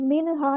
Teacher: نون کی ساکن کی آواز کو یہاں ظاہر کرنا ہے اور نون ساکن کی آواز کو یہاں ہلانا نہیں ہے